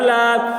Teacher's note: لام کے اوپر کھڑا زبر ہے، کھڑا زبر برابر ہوتا ہے الف مدہ کے، اس لیے کھڑا زبر کو ایک الف کے برابر کھینچ کر پڑھیں گے